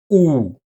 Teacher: The lips are as rounded as possible and the tongue is retracted all the way. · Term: monotone U